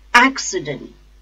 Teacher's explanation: The stress is on first syllable, ac.